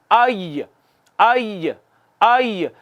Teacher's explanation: وسط زبان اوپر تالو کی طرف اٹھتا ہے، معمولی سی جگہ باقی رہ جاتی ہے